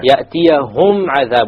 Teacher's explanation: Izhar shafawi, or the meme is pronounced clearly.